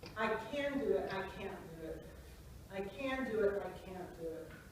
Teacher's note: It's just a little bit of a difference in the length of the vowel and the consonant.